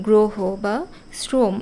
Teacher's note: সাধারণত আগে র ফলা থাকলে সেটার উচ্চারণ ওকারের মত হয়